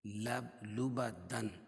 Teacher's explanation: وقفہ کی حالت میں 2 زبر کی تنوین 1 زبر رہ جائے گی اور دوسرے زبر کے قائم مقام الف آ جائے گی.